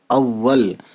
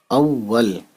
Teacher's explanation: واو پہ تشدید ہونے کی وجہ سے واو کو الف کے ساتھ بھی پڑھا اور واو کو لام کے ساتھ بھی پڑھا